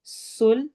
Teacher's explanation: سین میں سٹی والی آواز ہے. سلطا، تو کو موٹا پڑھنا ہے.